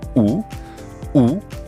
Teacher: oo is a high back rounded vowel